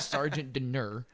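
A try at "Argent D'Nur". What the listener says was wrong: Argent dinner, not Sergeant dinner. You did Sergeant, yes sir.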